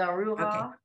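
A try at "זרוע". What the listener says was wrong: It's zaru ah. Because your ayin is a silent letter. All you're going to hear is that vowel.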